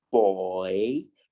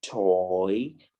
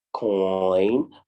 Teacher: to get this sound it is a combination of the short vowel sound o and the short e sound